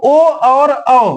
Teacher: इनका उच्चारण करने में हमें कंठ और ओष्ठ दोनों का प्रयोग करना पड़ता है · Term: कंठोष्ठम